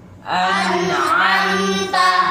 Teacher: bukan dengung lama tapi dengung jelas izhar